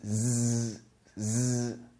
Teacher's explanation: So if you touch your throat, you can feel it vibrate. This is the voiced sound.